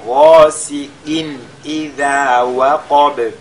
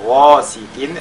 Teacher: la lettre ghain qui est le tafkhim